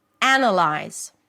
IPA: ˈænəlaɪz